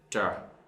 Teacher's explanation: TR, tr. So basically there is no air going out of the mouth.